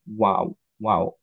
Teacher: ওয়াও আমরা যেভাবে বলি ইউজুয়ালি এক্স্যাক্টলি সেম ভাবে বলতে হয়, ওয়াও, ওয়াও, মুখটা রাউন্ড হবে, ওকে? আর লিপ দুইটা সার্কেল করতে হবে, রাইট? সো মিট করবে না দুইটা লিপ, কিন্তু সার্কেল হবে।